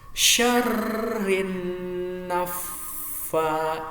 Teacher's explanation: Ditekan 2 harokat. Syarrin nafa, karena tiga-tiganya ada tasjidnya tuh ya.